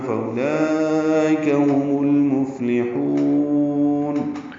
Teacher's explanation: ہا کو لمبا کریں گے، وقفاً مد عارض للسکون ہے